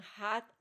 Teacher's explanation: Glottal at the vocal cord like in hat